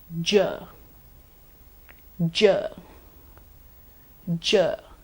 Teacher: It's a voiced palato-alveolar affricate.